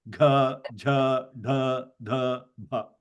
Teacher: Then the fourth of the class, Jabhagadhadha. You can see that they're all Mahaprana and soft.